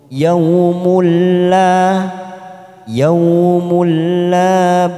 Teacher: Ayyatiya yaumul la, mim duma tanwin bertemu dengan huruf lam yang bertasdid. Yaumul la masuk tanpa ditekan lama-lama, namanya bacaan idgham bila guna, hanya masuk tanpa mendengung.